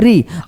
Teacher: उच्चारण करते समय जिह्वा जो है, ये जिह्वा मूर्धा को स्पर्श कर देती है, और जब स्पर्श करती है तो इस परिस्थिति में देखा जाए तो यह हिंदी में शुद्ध स्वर नहीं हो सकता है।